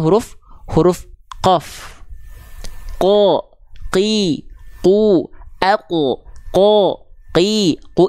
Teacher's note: lidahnya nempelnya hanya ke langit-langit lunak saja maka itu tempat keluarnya huruf huruf qof